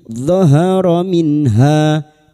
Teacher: Izhar halqi. Nun sukun dibaca jelas tanpa mendengung.